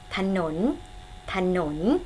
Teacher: สังเกตนะคะพยางค์แรกออกเสียงอะกึ่งเสียงพยางค์ข้างหลังจะออกเสียงเหมือนมีหอหีบมันนำค่ะ